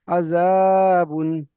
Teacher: তাই তানবিনের আওয়াজকে বিনা গুনা জাহির করে তাড়াতাড়ি পড়তে হবে